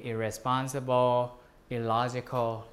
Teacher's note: the same morpheme becomes just I when it occurs before R or L